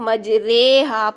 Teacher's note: تو یہ را امالہ والی ہوگی تو اس کو ہم مجریہا پڑھیں گے. اب جب ہم مجریہا پڑھ رہے ہیں تو یہ را موٹی نہیں ہوگی بلکہ باریک رہے گی. تو را ممالہ یعنی امالہ والی را بھی باریک ہی پڑھیں گے، ٹھیک.